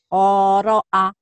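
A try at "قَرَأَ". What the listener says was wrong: Pendek. Yang ini pendek. Kenapa panjang ya? Pendek ini. Qoro'a ko. Ini baru panjang. Qoro'a qori'i. Qoro'a. Yang ini pendek. Qoro'a. Itu ada madnya. Ini pendek. Qoro'a.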